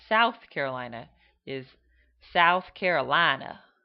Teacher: They both have what would be called a southern drawl, where they lengthen the vowels into long sounds